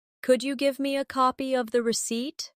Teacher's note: Could you becomes could ya in casual speech.